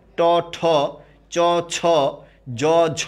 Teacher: অবশ্যই পরেরটায় বাতাসের চাপ বেশি যেটা বাতাসের চাপ মহা সেটাকে বলা হয় মহাপ্রাণ আর যেটা বাতাসের চাপ অল্প সেটাকে বলা হয় অল্প প্রাণ